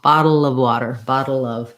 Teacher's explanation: The spelling of is very misleading. The sounds are really a schwa and a V, or in this case, it's probably a very short, unstressed schwa.